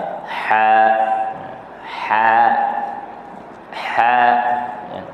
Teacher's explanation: Kalau huruf tha di hujung lidah, manakala ha di tengah halqum. Ha di tengah halqum. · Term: huruf ha